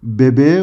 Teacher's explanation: Bebek kelimesine E sesini getirdiğimizde bebeğe olur. Dolayısıyla K sesi yumuşayarak yumuşak G'ye dönüşmüştür. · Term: ünsüz yumuşaması